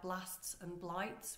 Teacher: that b l sound that blur sound is what we know as a plosive sound because it explodes from the mouth